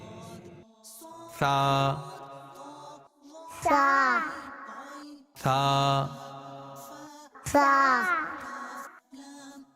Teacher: عربی میں تا کی ادائیگی کا طریقہ یہ ہے کہ زبان کا سرا اور اوپر کے دانتوں کے اندرونی کنارے سے ادا ہوتا ہے